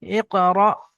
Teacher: এখানে হামজার উপরে সাকিন এসছে, তাই একটু এটা ঝাটকার সঙ্গে পড়বেন। হামজা কফ জের ইক, র, হামজা জবর র, ইক, র, ইক, র, বিসমি রব্বিকাল্লাযী।